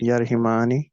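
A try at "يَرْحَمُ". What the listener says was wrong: نہیں, دیکھیے رحیمہ یرحمو ہے. اب مضارع میں آپ ہا کے نیچے زیر نہیں ہے بلکہ زبر ہے عین کلمے پر نا.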